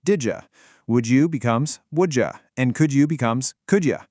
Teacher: When u follows a word ending in a d sound, it completely morphs into a J sound.